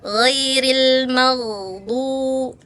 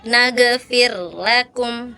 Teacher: Kalau huruf gha itu sifatnya rokhawah, ngalir ya, makanya kita harus alirin dulu nih, jangan sampai mantul ya. Kalau nggak ngalir maka lidahnya lepas mantul ya.